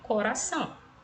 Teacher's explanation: observe, o R entre vogais tem um som fraco. O exemplo que eu trouxe para vocês aí, coração.